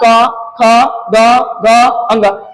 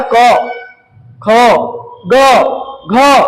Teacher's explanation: ये जो आप बोल रहे हैं इसका उच्चारण स्थान कहां से आ रही है, कंठ से। कहां से, ये जो कंठ आप देख रहे हैं ये कंठ का उपयोग हो रहा है।